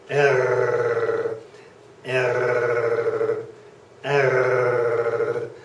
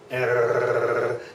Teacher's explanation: My tongue is not vibrating there. It is just the back of my throat, the uvula, that is vibrating.